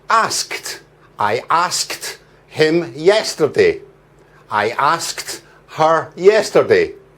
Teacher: for the past simple tense, for ask, we add ed. And the final ed sound is a t.